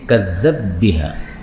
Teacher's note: Ini ba ketemu ba boleh idgham menjadi kadzdzab biha.